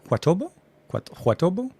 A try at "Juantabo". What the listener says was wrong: No, two separate. It's a name. Tabo. Juantabo. You would say tabo. Not with the minor anglicization of Albuquerque, New Mexico. It's now Juantabo.